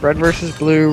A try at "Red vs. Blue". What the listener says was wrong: No, you said Bread versus...